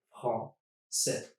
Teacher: And the second thing I'm changing is the AI, e. I'm turning it just into a regular e sound, accent grave, and dropping the S. Français. That's all I need to pronounce that word.